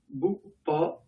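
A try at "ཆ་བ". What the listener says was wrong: Pourquoi Bupa? C'est Chawa. Chawa, hein, on est d'accord.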